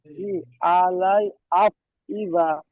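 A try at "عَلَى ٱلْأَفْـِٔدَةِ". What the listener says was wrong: আলাই নয়, আলাল। আইন যেমন আলাম, লাম যেমন লাল, আলাল, আলাল আফইদা।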